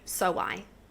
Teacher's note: In between so and I, we put a W, so I. Again, that's going to act as a bridge to bring those words together to speak naturally. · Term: intrusive sound